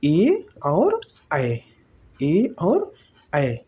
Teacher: ए ऐ वर्ण का उच्चारण स्थान कंठ तालु होगा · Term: कंठ तालव्य वर्ण